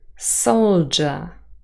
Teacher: D and Y forming J. We have the word soldier. We do not say sold Y anymore. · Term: Yod coalescence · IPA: /d/ + /j/ = /dʒ/